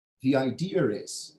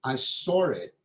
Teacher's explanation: add this R sound where a letter r does not exist in spelling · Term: intrusion